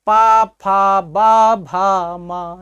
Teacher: देखिए हमारे दोनों ओठ आपस में सट जा रहे हैं, इसी कारण से इन्हें क्या कहा गया, उनका उच्चारण स्थान क्या रहा, ओष्ठ रहा।